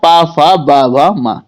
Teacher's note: और जो पा वर्ग होता है ये ओष्ठ से होता है